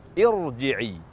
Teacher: huruf ra bersukun meskipun huruf sebelumnya berharakat kasrah, namun ia dibaca tafkhim karena huruf yang berkasrah tersebut adalah hamzah wasl. Maka kata irji'i dibaca tafkhim, bukan dibaca tarqiq.